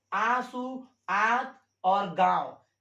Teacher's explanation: अनुनासिक जो होता है उसका उच्चारण नाक से भी होता है और मुख से भी होता है